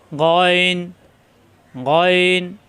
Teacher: গাইন কণ্ঠনালীর শেষ অংশ থেকে